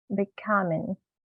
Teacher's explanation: Let's add more air for k.